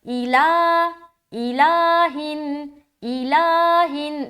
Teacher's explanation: ہم لام میں پریشر ڈال کے اپنی آواز کو اوپر لے جا رہے ہیں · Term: لام کو لمبا